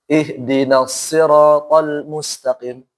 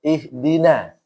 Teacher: Maka ingat, nggak boleh na-nya dibaca tebal.